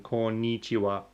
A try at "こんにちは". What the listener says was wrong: Yeah, you're saying ni strongly. You have to stress on こんにちは.